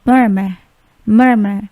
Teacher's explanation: huruf R atau R yang terakhir itu tidak dibaca